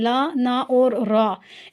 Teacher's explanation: तीनों का मखर जो है वो भी एक ही है यानी जबान की नोक को ऊपर वाले जो दो दांत है उनके मसूड़ों के साथ लगाया